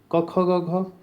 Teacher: जो ये कंठ से निकल रही है। गले से निकल रही है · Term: कंठ्य